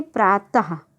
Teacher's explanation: विसर्ग का चिन्ह का उच्चारण आधे हा की तरह होता है।